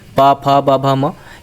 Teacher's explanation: भ म ये हमारे ओठों को जब हम बोलते हैं तो हमारे ओठ जो है आपस में छूते हैं स्पर्श करते हैं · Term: प वर्ग